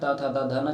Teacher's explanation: दंत व्यंजन त थ द ध न जिसे त वर्ग भी कहते हैं